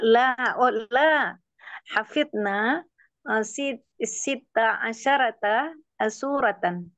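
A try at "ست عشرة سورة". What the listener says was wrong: Nah, shinnya mati sukun. Sita asyrata.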